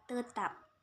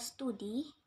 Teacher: t yang biasa diucapkan apikodental seperti pada kata tetap tetapi pada kata studi diucapkan secara lamino alveolar t · Tetapi, pada kata studi, diucapkan secara lamino-alveolar T. Perubahan letupan apikodental T menjadi letup lamino-alveolar T karena pengaruh secara progresif dari bunyi geseran lamino-alveolar S. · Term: asimilasi progresif